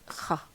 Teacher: So the first pronunciation of H was kha, which is a voiceless, uvular sound, fricative sound